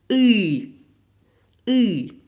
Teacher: Il n'y a pas d'équivalent en français. C'est quelque chose entre OU et I qui est U, c'est un son émis du fond de la gorge.